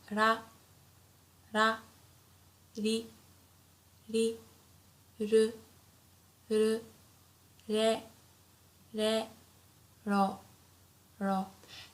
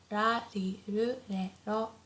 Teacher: the R sound is not as harsh as in English, so it's not like r, not like R, but it's very soft in between L and R